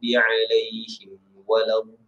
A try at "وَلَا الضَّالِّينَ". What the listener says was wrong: Masa sebut dha tu biar ke dalam suara dia sebab dia itbaq. Walau dha ke dalam, suara tu di dalam. Bukan jangan walau itu macam dia atas lidah aja. Walau dha, bukan walau dha. Walau macam cuba disebut walau dha. Dalam dalam sikit. Masuk ke dalam, tolak ke dalam. Tarik ke dalam suara tu. Jangan tolak ke walau gitu, tak dia ke dalam. Walau ditarik ke dalam.